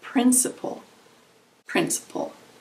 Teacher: Principle has three syllables. Principle. The emphasis is on the first syllable.